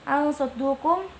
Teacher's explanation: Al saddukum, hukum bacanya ikhfa hakiki karena nun mati bertemu dengan sod. Cara bacanya disamarkan dengan guna, panjangnya 2 harokat